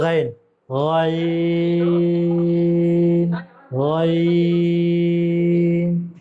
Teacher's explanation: آواز کو موٹی کر کے پھر باریک کرنی ہے اس کو